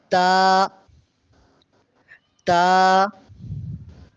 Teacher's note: تا کو باریک پڑھتے ہیں، اس کو موٹا کر کے نہیں پڑھیں گے، باریک پڑھیں گے